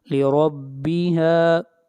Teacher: را کو موٹا پڑھیں گے، را کے اوپر فتحہ ہے